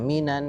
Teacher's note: Coba ditahan lagi nunnya, minan 2 harokat.